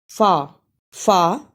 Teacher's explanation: फा को अदा में एक अलिफ की मिक दार है फा फा सनाया उलिया के किनारे और नीचे के होठ के अंदरूनी हिस्से से मिलने से अदा होता है यानी ऊपर के दो दांतों के किनारे और नीचे के होठ